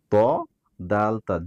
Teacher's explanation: জিহ্বার আগা উপরের 2 দাঁতের ইনসাইডে, পিছনে গোড়ার সাথে লাগবে